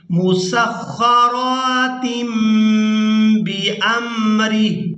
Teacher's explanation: यहाँ तनवीन में जो नून की आवाज़ है इसको मीम के साथ बदल कर अदा करेंगे, क्योंकि तनवीन के फ़ौरन बाद बा आ गई है तो यहाँ पर इक़्लाब करेंगे।